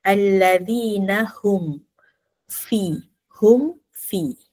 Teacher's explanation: mim tu bunyi jelas izhar dizahirkan dinyatakan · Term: izhar syafawi